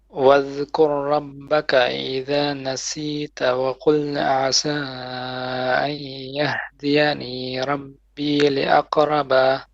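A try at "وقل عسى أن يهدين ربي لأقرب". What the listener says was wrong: Okay, you're stretching some letters. Okay, واذكر ربك إذا نسيت وقل عسى أن يهدين. So here you said أن يهديني. Obviously, you can continue, but يهديني. Don't stretch it.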